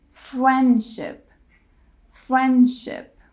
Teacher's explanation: when D comes after n would drop the D